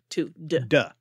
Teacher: the stop instead just becomes voiced, doesn't become a fricative